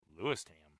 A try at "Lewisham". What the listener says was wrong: Well, no T, just Lewisham. Lewisham. Like Lewis made a ham.